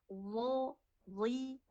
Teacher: Karena memang huruf dengan huruf dal itu satu makhraj. ada di ujung lidah menempel ke ujung gigi seri atas